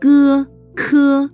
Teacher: K is different from g because it has a stronger burst of air. · These sounds come from the back of the tongue, touching the soft palate.